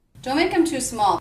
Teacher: the word them begins with a vowel, and the word before, make, ends with a K, I'm going to make sure that those two words link and feel like one unit. Make 'em, rather than two separate words.